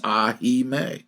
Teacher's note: he sings all three syllables and stretches them out ever so slightly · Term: true three syllables